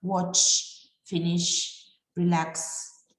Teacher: tanto watch como finish como relax terminan en sonidos que son como un silbidito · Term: sonido sibilante